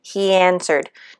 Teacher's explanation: sound and the next word begins with a different vowel sound we don't pause in between the two words so the two vowel sounds are said in the same breath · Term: linking